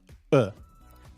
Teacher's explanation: The vowel sound e has become uh this uh is what we call the schwa